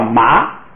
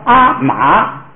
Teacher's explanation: 节后音节，或者第1个音节第2个音节。这是说第2个音节就是这意思，就是说如果一个词有2个字，就是有第2个字，第2个音节的低声调一律变为高平调，就是2声要变1声。为什么呢？就是说话的时候第2个词啊，第1个词比如说已经发声了，第2个词如果你再从中间低下去再往上升，它那就很别扭，所以呢第2个词就跟着前头就说就完了，就变成平声。举这个例子你看啊，就是这个阿妈，这个阿妈呢啊是高平声啊， 后边这个字母本来是低声调，就是从低处往上升的 ，叫麻。你要说阿马，这个就是说话很别扭，所以他就到后边这个就不再低下去往上升了，叫阿妈，就是第2音节的低声调呢，就改成高平调就完了。你看下边那个例子，塔罗，